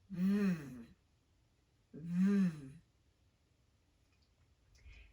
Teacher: When English speakers make the V sound, we position our top front teeth lightly against the inside of the lower lip. This creates an obstruction in the airflow, which results in friction. You can hear that friction when you listen to the V sound.